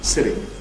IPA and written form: ˈsɪt̬i (City)